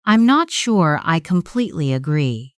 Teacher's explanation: Let your voice remain open at the end as if you are inviting a reply.